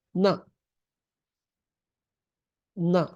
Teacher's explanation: high pitched na, because there is that sa on the top